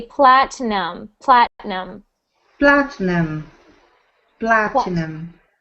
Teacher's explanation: we pronounce that word with no I sound we ignore the I we don't pronounce it we say Platinum